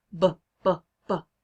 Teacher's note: So if you put your hand right here on your throat and you say b, b, b, you can hear your vocal cord vibrating. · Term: voiced consonant